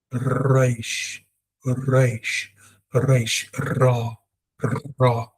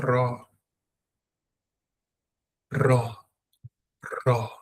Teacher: Your tongue needs to vibrate. There must be a vibration of the tongue for Reish